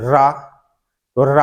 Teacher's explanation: आप उच्चारण करिए रा रा का जब आप उच्चारण करोगे तो जीभ की जो नोक है वह मसूड़े के पास में आकर कांपे गी उसको कहते हैं हम क्या प्रक पी व्यंजन रा एक लुंठित